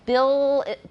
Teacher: So, look, that's a clear L. Bill is a dark L, but I've still got alveolar contact. So we've got two articulations.